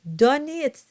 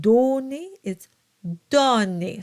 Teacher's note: And the donné, the O is open.